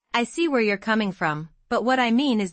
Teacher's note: stress mean and coming from to show sincerity